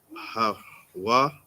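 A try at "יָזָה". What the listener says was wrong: You said ya, and then you said ha again. It's not a ha. What's the middle word?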